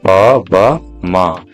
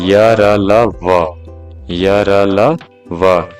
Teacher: सब के उच्चारण में हवा जो है कम मात्रा में निकलता है तो इसलिए इसको बोलते हैं अल्पप्राण